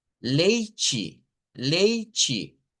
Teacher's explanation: veríamos la diferencia en la T, E del final, que en Brasil la hacen como CH, leite, leite, mientras que en Portugal mantienen eso.